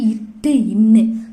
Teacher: நாவின் நுனி அன்னத்தின் நுனியை தொடுவதால் பிறக்கும் எழுத்து